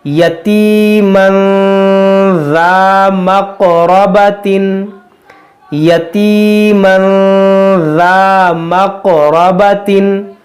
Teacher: یہاں پر اخفا ہوگا یعنی غنہ ہوگا، اور یہ قاف میں قلقلہ ہوگا